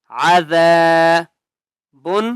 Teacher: ذال کو ایک الف کی مقدار کھینچ کر پڑھیں گے اور ذال کو سختی سے نہیں پڑھنا، نرمی سے پڑھنا ہے، زبان کو تھوڑا سا باہر نکال کر پڑھیں گے